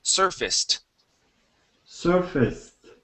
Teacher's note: the ACE here will actually be pronounced like a short I and an S